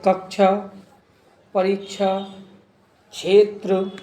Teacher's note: इसमें हल्का का और श की मिलीजुली ध्वनि रहती है